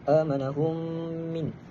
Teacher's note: Yakni idgham mislain. Kita masukkan mim yang mati kepada mim yang kedua. Mim yang berbaris dengan membaca hunah.